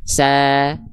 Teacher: Huruf sin kenapa ketika berbaris atas dia nggak dibaca vokal O? Karena huruf sin adalah huruf yang tipis